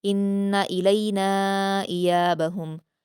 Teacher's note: इन्ना में नून मुशद्दद है, गुन्ना करेंगे लेकिन हरकत होने की वजह से जल्द पढ़ेंगे। इलैना नून पर मद्दे मुनफ़सिल है इसलिए 4 हरकात खींचेंगे।